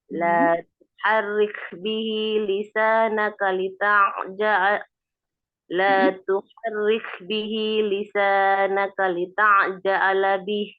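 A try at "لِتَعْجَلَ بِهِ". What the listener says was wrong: Lita'jala bih. Nggak ada A-nya. Lita'jala bih.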